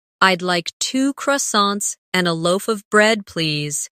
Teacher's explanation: In connected speech, loaf of sounds like loa